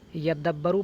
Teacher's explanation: یدبروا اصلہ یتدبروا، یدبروا در اصل یتدبروا، فادغمت التاء فی الدال، تو تا کا دال میں ادغام کر دیا گیا۔ تا کو دال میں مدغم کرنے کے بعد اس کو یعنی تا کو دال میں ملانے کے بعد یدبروا پڑھا گیا